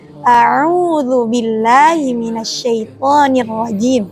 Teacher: Di sini bukan a'udzu, bukan a'udzu, tapi yang pertama huruf hamzah yang keluar dari tenggorokan bagian bawah, yang kedua huruf ain yang keluar dari tenggorokan bagian tengah. Jadi bacanya a'udzu billahi minasyaitonir rajim.